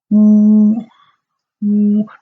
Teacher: the lips should be rounded when pronouncing Wu. You say W, but you add U at the end, so Wu.